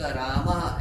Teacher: और ये विसर्ग का उच्चारण कंठ से होगा, विसर्ग रामः ऐसा कहेंगे।